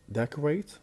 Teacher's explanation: We have decorate, the stress on the beginning.